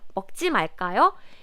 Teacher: use 지 말까요 with question mark at the end with the rising intonation